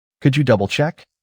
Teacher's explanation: Could you double check? Hear how your voice goes up? That makes it polite. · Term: rising tone